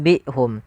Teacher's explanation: kita ganti suara nunnya diganti dengan suara mim, maka ditandai dengan mim kecil di atas katanya atau di atas huruf nunnya, supaya kita membaca nun sukunya diganti dengan mim. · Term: iqlab